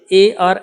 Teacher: कंठ तालु से ए और ऐ का उच्चारण होता है